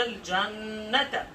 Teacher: جنت نون مشدہ پر ہم غنہ کر رہے ہیں